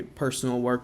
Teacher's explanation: The pidgins, Creole or Creole, sort of warp how words are pronounced and how syllables are stressed. So West African English is non-rhotic, so the R is not pronounced following a vowel.